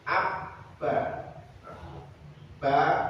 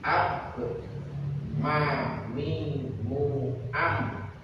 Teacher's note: ba dan mim keluar dari paduan antara dua bibir dalam keadaan tertutup